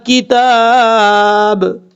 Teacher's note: اب ہم نے وقف کیا ہے اس لیے با کو ساکن کر دیا ہے